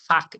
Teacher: ele passa entre o o dente e os lábios e faz um som de faca. Isso é fricativo. Lábiodental é o lugar.